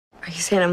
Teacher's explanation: And then the N links right into the next word, the I as in by diphthong.